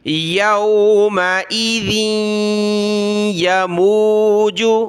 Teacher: ذال کو یا کے ساتھ ملایا ناک میں آواز پیدا ہوگی